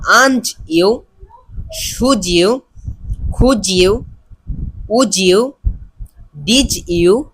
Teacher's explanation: ওয়ার্ডের শেষ letter ডি হয় এবং তার পরবর্তী যে ওয়ার্ড তার প্রথম অক্ষর ওয়াই অথবা ইউ হয় তাহলে ডি এর উচ্চারণ বর্গীয় জর মতো হবে